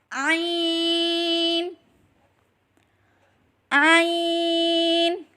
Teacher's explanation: حلق کے درمیان والے حصے سے ادا کریں